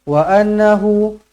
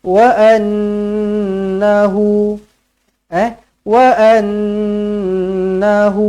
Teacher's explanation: Nun yang bertanda sabdu kena dibaca, wajib dibaca dengan dengung dua harakat wajibul gunnah. Sebab itulah nama dia wajibul gunnah.